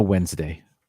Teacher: i usually don't say the d wed's name wednesday skip the d just